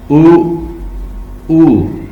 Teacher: Back of the tongue है जो वो सॉफ्ट पैलेट को टच कर रही है, ऊ। तो यू के साथ जो डबल कॉलन है ये भी इस चीज की निशानदेही कर रहा है कि हमने इसको लंबा कहना है, ऊ, तो ऊ जब जैसे हम करेंगे तो back of the tongue फॉरन soft palate को टच कर लेगी। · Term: बैक वावल